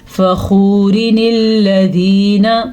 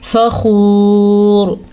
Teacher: اگر آپ رک جاتے ہیں آیت پہ تو پھر ہم اس نون کو نہیں پڑھیں گے